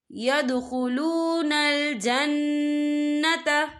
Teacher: نون مشدد ہے تو یہاں پر غنہ ہوگا